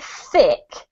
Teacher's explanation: when I say thick I'm blowing lots of air through to get that sound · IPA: /θ/